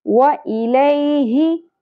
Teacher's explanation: ہا اقصی حلق سے ادا ہوگا گہرائی کے ساتھ